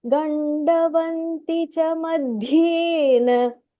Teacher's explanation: The dha is Mahapranah here, and the da is not Mahapranah.